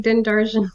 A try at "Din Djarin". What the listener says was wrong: No, the D is silent.